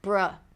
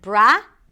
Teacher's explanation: And then the second syllable is bruh. It's a B sound, an R. Round your lips for the R. And a schwa sound. It's a very neutral vowel sound.